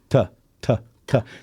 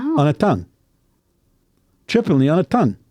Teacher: the T on tongue is what we call dentalized okay we go t t t so your teeth come down